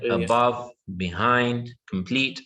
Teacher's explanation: all of them are two syllables same thing two syllables but now our stress is on the second